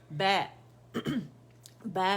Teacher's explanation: फ़तह के लिए आवाज़ जो है एक काउंट के लिए ऊपर जाती है। जैसे हरफ मफ्तू है, फ़तह हरफ मफ्तू जिस पर फ़तह होती है, जिस लेटर पे, आवाज़ एक काउंट के लिए ऊपर जाती है।